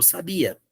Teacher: o ditongo ele gruda e puxa o som pro final